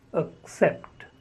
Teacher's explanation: The first syllable is the schwa sound